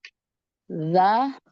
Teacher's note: Dza itu ujung lidah menyentuh gigi gusi atas. Gigi seri atas ya.